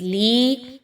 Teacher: لام یا زیر لی یا مدہ 1 سے 2 الف کے برابر اس کو پڑھنا ہے